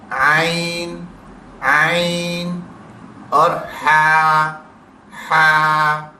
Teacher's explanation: हुरूफ हलकी दरमियान हलक से अदा करने हैं